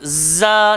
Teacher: Hujung lidah, langgar belakang gigi bawah. Dan sifat zai berdesir.